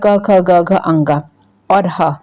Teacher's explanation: जो सूत्र है अक वि सजिया नाम कंठ इसका मतलब होगा अ आ क वर्ग ह और विसर्ग इनका जब भी उच्चारण होता है तो यह कहां से होता है कंठ से होता है